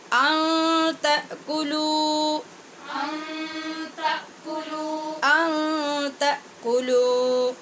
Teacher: نون پہ اخفا ہے اور کلو میں واو مدہ ہے، اس کو لمبا کر کے پڑھیں گے